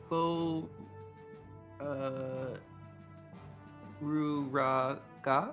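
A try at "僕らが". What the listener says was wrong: Not Rue. It is Ku. You are correct. So Boku.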